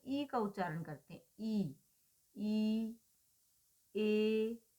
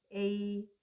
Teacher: जिन स्वरों के उच्चारण में ओष्ठों की स्थिति स्वाभाविक और उदासीन बनी रहती है, यानी उनमें ज्यादा हलचल नहीं होती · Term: अवृत्ताकार